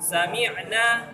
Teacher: pengucapan sin harus ada sifat safir dan ada sifat hams. Arti hams udara yang mengalir. Arti safir suara yang berdesis. Jadi jangan lupa anginnya.